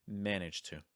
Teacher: Because the T and the D sound are so similar in terms of mouth position and even sound, we can really join those together a little bit faster